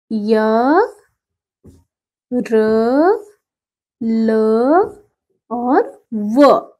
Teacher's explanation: ये बिना मुख के किसी भाग को स्पर्श किए बोले जाते हैं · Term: अंतस्थ वर्ण